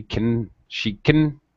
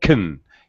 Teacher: you barely even hear the vowel